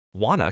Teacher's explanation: Wanna comes from want to. The t sounds disappear completely. It is an example of elision, which means deleting sounds to make speech smoother.